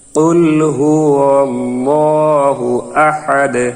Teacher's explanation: এখানে আমরা যখন অক্ষ করব তখন দালের এই দুই পেশ থাকবে না, দালটি সাকিন হয়ে যাবে এবং কলকলা উচ্চারিত হবে